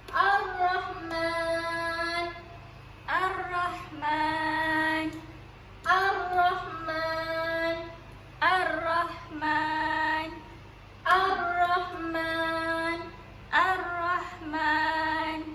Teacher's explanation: kita tak baca pun lam ni. Kita terus masukkan huruf lam ke dalam huruf ra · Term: alif lam syamsiah